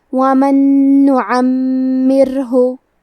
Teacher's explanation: حرف المیم پہ تشدید ہے، تو ہمیں دو حرف کے برابر میم کو پڑھنا ہے، کیونکہ تشدید کی اصلیت دو حرف ہے.